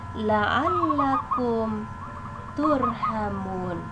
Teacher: Lafal ini mengandung izhar syafawi karena terdapat huruf mim berbaris sukun bertemu dengan huruf ta, salah satu huruf izhar, sehingga cara membacanya adalah jelas